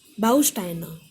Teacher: There are three syllables, stress is on Bau, Bausteine.